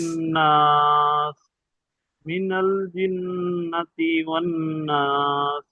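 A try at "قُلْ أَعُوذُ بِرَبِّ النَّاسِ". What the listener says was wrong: মাশাআল্লাহ, অনেক সুন্দর হয়েছে।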